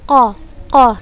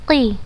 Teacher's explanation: suara diantara lidah dan langit-langit seperti Huruf qaf Hai Koh kokoh tebel dia memang jika berbaris fathah tapi jika berbaris kasrah dia jadi tipis